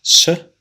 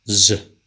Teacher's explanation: when you produce S no vibration when you produce Z there's vibration in the vocal FS voicing is the state of the glotus